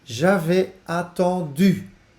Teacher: Attendu op een U-klank voor deze groep van werkwoorden, zoals vendre, attendre